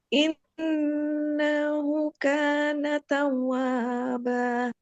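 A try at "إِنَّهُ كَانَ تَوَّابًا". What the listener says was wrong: un-nya belum panjang jangan takut Takut malah jadi pendek. Ayun dulu sedikit.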